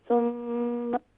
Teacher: یہاں پر میم مشدد ہے، کمپلیٹ غنہ کیجئے